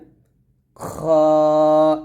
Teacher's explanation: আমরা পাতলা করে উচ্চারণ করি আর এটাকে অনেকে আমরা খা বলি খা তো বলা যাবেই না খ বলতে হবে তবে খ টা মোটা করে উচ্চারণ করতে হবে